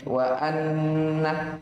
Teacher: Dia nun tasydid, hukumnya digunnah. Sekitar 2 harokat.